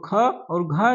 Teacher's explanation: और ख और घा जो है ये महाप्राण है